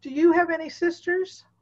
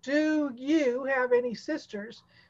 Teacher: The do and you comes out kind of like one syllable.